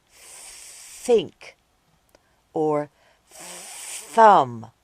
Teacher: do it quietly like at the beginning of think or thumb this sound is called the unvoiced th sound